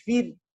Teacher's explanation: ra sukun jatuh setelah harakat kasrah maka dibaca tipis